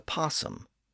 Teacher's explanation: The O part at the front isn't pronounced much these days.